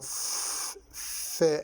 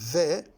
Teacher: The fe is minus V, voiceless. The ve sound is voiced. Labiodental.